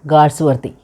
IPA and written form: ˈɡɔːlzwɜːrði (Galsworthy)